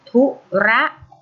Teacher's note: ที่พยางค์หลังธุระออกเต็มเสียงเลยนะคะ